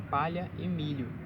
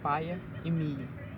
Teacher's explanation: pela substituição do dígrafo LH por I, como em palha e milho, que se lê em paia e milho